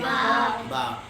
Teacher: با ہونٹوں کی خشکی والے حصے سے ادا ہوتا ہے۔ ہونٹوں کو جب ملایا جاتا ہے تو خشکی والے حصہ جب آپس میں ملتا ہے تو اس سے با ادا ہوتا ہے۔